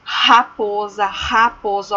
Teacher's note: Olha o r o som vem na garganta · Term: som forte